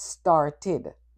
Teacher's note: itid which adds an extra syllable to the word